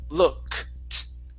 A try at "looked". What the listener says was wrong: So you're adding a vowel. You're adding a vowel in between there.